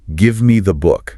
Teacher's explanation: The stress is on give and book.